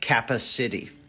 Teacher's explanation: they're using a syllable timed where each syllable has the same stress